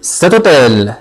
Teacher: il y a la liaison entre le T, la lettre T, et la voyelle O. On ne peut pas dire cet hôtel.